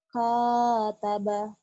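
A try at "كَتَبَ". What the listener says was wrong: Bukan ho ya, Kataba. Bukan H Ibu, ini K. Kakak, kakak. Itu mulutnya kayak H. K. Kaki. Kedengarannya kayak hataba ya. Coba lagi, artikulasinya lebih jelas. Baju kakak, kakak, kiki, kuku, kaki, kataba. Coba, yang jelas. Mungkin artikulasi bibirnya agak terbuka, agak ini ya. Jadi kayak hataba.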